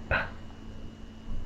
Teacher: My lips are closed. I'm popping the air. P. The lips are closed.